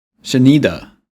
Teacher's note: On the word that they want to stress, which is 你的 in this case, the learner raises its pitch.